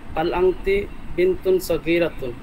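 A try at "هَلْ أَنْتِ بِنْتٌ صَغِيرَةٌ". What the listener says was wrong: আর আপনাকে এর আগেও বলেছি, প্রশ্নকে প্রশ্নের মতো করে করুন। হাল আনতে বিনতুন সগীরাতুন,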